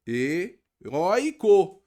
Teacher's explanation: Agora a sílaba tônica é o roi, mas não é aqui oxítona. Heróico é uma paroxítona.